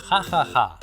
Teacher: La h només es pronuncia, de manera aspirada, en certes onomatopeies, per exemple, per representar el riure: ha!